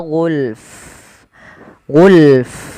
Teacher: Ah ini jangan cuman gul tapi fanya juga ikut mati ketika kita wakaf